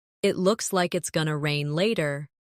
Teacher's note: It looks like it's going to rain later. In connected speech, going to becomes gonna.